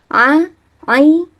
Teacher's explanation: Jadi udaranya tertahan ketika kita mengucap huruf ain.